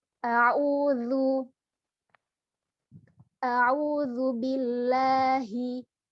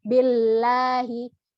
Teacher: Di sini lafaz Allahnya, lafzul jalalahnya didahului oleh huruf berharokat kasrah. Maka suara yang harus dikeluarkan adalah tarkik atau tipis.